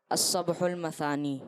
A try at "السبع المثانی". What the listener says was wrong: ہاں نہیں، عین ہے۔